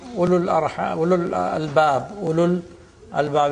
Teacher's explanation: So ulu, where the waw is not pronounced